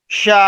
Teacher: یہ مد لازم ہے, اس کو 5 الف کے برابر کھینچ کے پڑھنا ہے